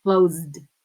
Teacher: even though it finishes with an S we say Z right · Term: voiced sounds